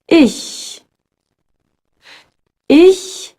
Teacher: instead of rounding your lips as in show you pronounce it with the lips stretched ish one trick to keep the back of your tongue up